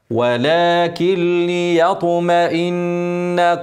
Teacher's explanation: نون ساكنه بعدها ل هنعمل ادغام كامل وما فيش غنه ما فيش نون ولا ك لي ولكن ولكن ولكن ليطمئن قلبي